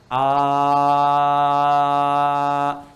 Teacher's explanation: Paling gampang yang Anda mengucapkan a, tidak ada sekat, udara mengalir saja, mengalir. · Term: hamzah